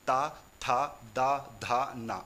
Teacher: जैसे ही आप ता बोलते हो तो जीभ आपके दांतों को स्पर्श करती है, इसीलिए इसे दंत्य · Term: दंत्य व्यंजन